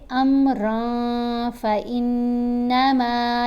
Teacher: نون کو واضح کر کے نہیں پڑھنا، اور ایک حرکت کے برابر ٹھہر کر بھی پڑھنا ہے۔